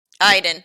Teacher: I went to go back to read his pronunciation. Inflection on the A-I and an E sound instead of the O in the second syllable.